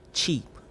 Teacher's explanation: The tongue comes up to make contact with the back part of the alveolar ridge to form a stop closure. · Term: affricate